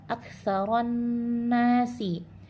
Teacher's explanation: lamnya tidak dibaca, dimasukkan sempurna ke dalam huruf nun, maka hukumnya adalah alif lam syamsiyah atau biasa disebut idgham syamsi.